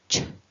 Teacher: the sound is released forwards out of my mouth with a puff of air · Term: ch sound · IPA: /ʧ/